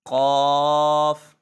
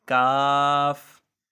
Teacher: دونوں میں فرق اتنا ہے، یہ موٹا پڑا جائے گا جو نقطوں والا کاف ہے، اور یہ کاف کتاب والا، اردو میں کتاب والا کاف کہلاتا ہے، تو یہ تھوڑا باریک پڑا جائے گا